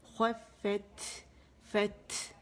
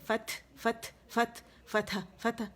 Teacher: خوفت یعنی آواز ہماری جو ہوا ہے وہ خارج ہوگی، ہمارے ہاتھ پہ فیل ہوگی، خوفت. اچھا پھر میں باریک ہے، میں کے لیے جبڑا کھلے گا. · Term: ہمس